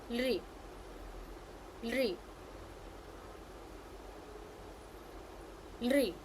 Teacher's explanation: it has the dental sound lri